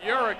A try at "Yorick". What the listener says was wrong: Yorick. You said Yorick. You pronounce it with like an E. Yorick. At least say his name right.